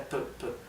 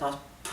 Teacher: Es una P más explosiva y más dura que la del español, que la nuestra es P, P.